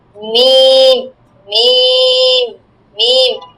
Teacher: দুই ঠোঁটের শুকনা জায়গা হইতে মিম, মিম, মিম, আর ভিজা জায়গা হইতে বা উচ্চারণ হয়, বুঝছো? আমাদের ঠোঁটের শুকনা জায়গা আছে, ভিজা জায়গা আছে, তাই না?